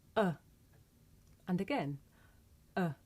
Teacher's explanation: this is a short vowel sound it's pronounced uh and to make this sound you just relax your mouth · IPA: ə